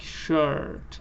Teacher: Your lips and tongues and jaw are all relaxed, and you open your mouth and you say like shirt. It's exactly like schwa, but it's a little longer. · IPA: /ɜː(r)/